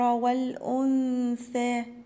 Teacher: النون الساكنة وراء حرف الثاء هيبقى فيها إخفاء